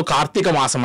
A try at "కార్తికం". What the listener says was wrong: కార్తీకం అనేకులు తెలియకుండానే కార్తీకం అంటూ ఉంటారు. గుడి దీర్ఘం లేదు, కార్తీకం.